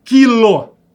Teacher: você não escuta o som do U em quilo